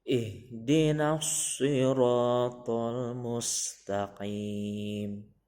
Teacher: cara membacanya agak di tengah tenggorokan tetapi masih di atas, jadinya mengucapkannya ko, bukan k tapi ko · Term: huruf qafnya bertitik 2